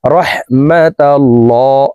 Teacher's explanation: আল্লাহ শব্দের আগের হরফে জবর আছে, এই কারণে এই লামকে মোটা করে পড়তে হবে, অর্থাৎ ল বলে পড়তে হবে।